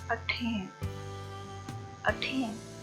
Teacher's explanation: तो यहाँ पे जो आ का साउंड है वो अनस्ट्रेस्ड है, और जो स्ट्रेस्ड है जिस पे जोर दिया जा रहा है वो टा का साउंड है